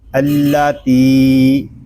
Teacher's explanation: یہاں تا کو ہم ایک الف تک کھینچ کر پڑھیں گے کیونکہ یہاں پہ یا مدہ ہو رہا ہے